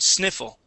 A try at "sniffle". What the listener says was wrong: Instead of snee, it is sni.